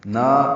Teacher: نا یہ الف مدہ ہے، 2 حرکات لمبا ہے